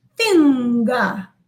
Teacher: both na and the ga the result is to produce this velar sound